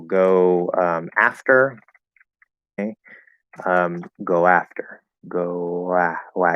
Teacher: go after go wow you hear a little w there · And you go to any other vowel, you're going to get a connection with a small W, a small W sound. Okay? It's not a full W, it's a light W.